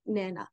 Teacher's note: bananas three syllables banana and it's typical where you can have a young child who will reduce the amount of syllables and say nana